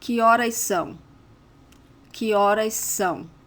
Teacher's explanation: you see horas ends with an S and são starts with an S. So we tend to put the 2 together.